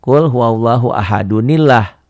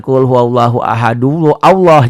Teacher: Karena ketemu alif lam, lafaz Allah, jadi dibaca nun, dibantu nun wikoyah, nun iwaji.